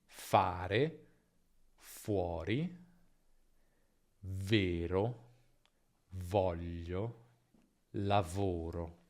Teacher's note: La differenza tra i due, come sempre, è la vibrazione, che c'è solo in v, ma non in f.